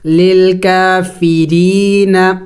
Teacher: دیکھیں را کو باریک پڑھیں گے، اس لیے کہ جب را کے نیچے جب زیر ہو تو پھر را کو باریک کر کے پڑھا جاتا ہے